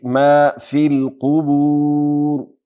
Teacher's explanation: ما میم نه وروسته الف باریک ویل کیږي، میم نه وروسته الف ډک ونه ویل سي، داسې به نه وایو ما في الصدور، ما في القبور بلکې ما في القبور.